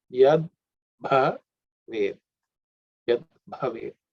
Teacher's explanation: That bha is also fourth letter in the pa varga, so it has to be aspirated.